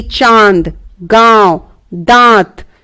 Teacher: इसका उच्चारण करने में हमें नाक और गले दोनों का प्रयोग करना पड़ता है